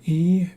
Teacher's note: E is the highest sound. So E is a high sound coming from the front of your vocal tract